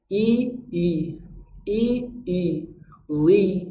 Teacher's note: Demikian juga zal, kalau berharokat kasroh, maka dibaca zi, bunyi i yang tipis. Tapi kalau zo yang berharokat kasroh, maka bunyi vokalnya adalah bunyi i yang tebal, bukan i yang tipis. Maka i-nya itu ikut tebal, zi, zi, bunyi i tipis i, bunyi tebal i, i, i, zi.